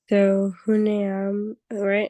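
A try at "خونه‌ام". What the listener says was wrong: Or khane-am, exactly.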